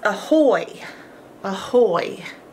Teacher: this is actually a schwa sound which is a lazy way of saying a vowel so Ahoy starts with an A uh but it's not quite